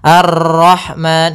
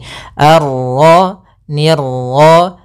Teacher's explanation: untuk pantulan dalam huruf ro itu cukup sekali saja karena sifat ro ada sifat takrir yaitu pengulangan tapi hanya sekali